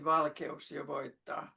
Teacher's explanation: the e and the u are parts of different syllables, no diphthong